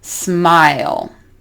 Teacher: So we start down at the bottom of your mouth with ah, and then we move up.